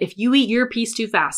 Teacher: we commonly reduce your down to yer